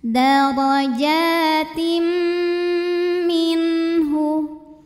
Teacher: Darajatim dan tahan bunyi m-nya. Didengungkan sampai ada suara masuk hidung ya. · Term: idgham bi gunnah